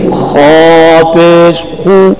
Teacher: पेश में और वो में तो मुंह गोल होंगे क्योंकि पेश और वो का मखरज होंठ है